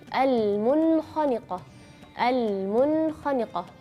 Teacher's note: Terus kalau huruf nun sukun ketemu atau tanwin ketemu huruf kha, yaitu juga huruf yang terakhir di bagian paling atas bagian tenggorokan, juga ilhar bacanya kalau di dalam satu kata al-munkhaniqah, al-munkhaniqah.